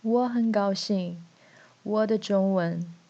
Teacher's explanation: he is unconsciously using the tone pattern of English sentence, which is falling tone at the end. But in Chinese, each character has its tone, so you need to use the correct tone on every single character.